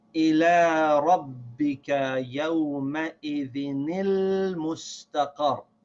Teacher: the noon sound from the tanween connects with this lam that has the sakin.